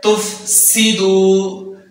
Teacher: دال کو دو حرکات کے برابر لمبا کریں گے کیونکہ دال کے اوپر پیش ہے اور آگے واو ساکن ہے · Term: واو مدہ